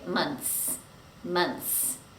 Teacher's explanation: We don't pronounce the th sound because it's too difficult to say months. So we just drop it and we say months, months.